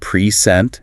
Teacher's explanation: Stress the second present, and it's a verb.